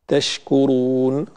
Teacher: حرف الشين من كلمة تشكرون حرف فيه صفة التفشي، فنترك الهواء ينتشر في الفم ولا نعترضه بقلقلة أو بتشديد